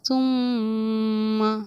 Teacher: اب میم پر تشدید ہے تو میم کو پڑھتے ٹائم ہمارا غنہ ہوگا، اس لیے ہم نے تمہ نہ پڑھ کر ہم نے اسے پڑھا تم.